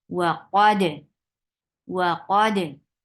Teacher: To make qalqala, we just pull them apart. We give gap in between. This makes qalqala, but we are not opening our jaws. When we open our jaws, that will bring fatha in, which we don't want in qalqala.